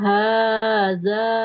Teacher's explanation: huruf dalnya Fathah ketemu alif panjang dua dua harakat ya.